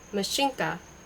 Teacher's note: The accent is on the first syllable, with the A pronounced as in ask, and in a palatialized in as in mignon.